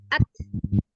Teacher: Kalau ta alhams ditampakkan ketika ada hembusan nafas yang mengalir. Misal kita letakkan punggung telapak tangan kita, itu kan ada hembusan nafasnya.